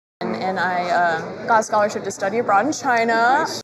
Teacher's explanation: it's kind of flat until she gets to the end where she lifts up.